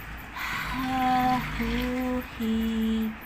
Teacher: ح جب پڑھتے ہیں نا تو ح میں ہمس ہے، ہمس کا مطلب ہوتا ہے سانس کا جاری رہنا، تو ح ادا کرتے وقت ہمارا سانس جاری رہتا ہے۔ ح وسط الحلق سے ادا ہوتا ہے، وسط الحلق عین ح، یہ اس کا مخرج ہے، یعنی گلے کے درمیان سے ح اور عین ادا ہوتے ہیں۔